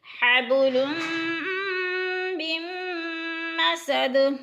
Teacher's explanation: حبل من مسد، میم نون ساکن، پہلے میم مشدد ہو پھر درمیان میں نون ساکن، اگر پھر میم مشدد آ جائے تو درمیان والی نون ساکن کو نہیں پڑھیں گے بلکہ میم کو میم کے ساتھ ملا کر ادغام کریں گے